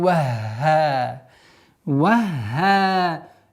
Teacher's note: с огласовкой фатха уходим на удвоенный ха